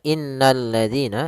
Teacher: Alif lam yang kita tulis tapi tidak dibaca, sehingga kita langsung baca ke huruf lam yang ketiga, yaitu berupa lam tasydidnya. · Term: alif lam syamsiyah